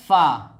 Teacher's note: फ़ा का मखरज है दोस्तों नीचे के होंठ की तरी